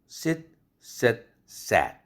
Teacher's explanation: sit, sat, sat 턱이 점점 밑으로 내려갔죠. 그럼 그거 턱에 따라서 혀도 내려갔죠.